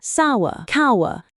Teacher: That is three vowel sounds in a row within one syllable. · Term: trip thongs